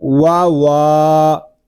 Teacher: یہاں واو کو ایک الف تک کھینچ کر پڑھیں گے. یہاں پہ الف مدہ ہو رہا ہے، اس کو وا والی نہیں پڑھیں گے، اس کو پڑھیں گے وا وا.